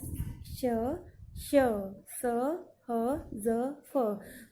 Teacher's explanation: इनका उच्चारण करते समय एक अंग दूसरे को स्पर्श नहीं करते, लेकिन इतने निकट आ जाते हैं कि हवा को उनके बीच से घर्षण करते हुए निकलना पड़ता है। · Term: संघर्षी व्यंजन